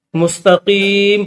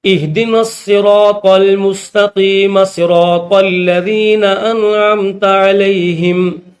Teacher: جب اس آیت کو اگلی آیت کے ساتھ اگر ملا کر پڑھا جائے تو پھر میم کے اوپر زبر پڑی جائے گی